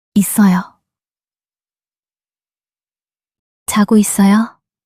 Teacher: the final s in it links to the following vowel sound in 어요